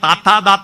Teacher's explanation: പല്ലിന് തൊട്ടു പറയുന്ന താത്താ താത്താ എന്ന ദന്ത്യം